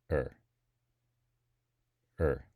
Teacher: the r is a r-colored schwa